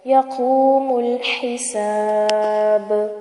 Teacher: ہا واضح کریں گے اور با پہ کلکلا کیا جائے گا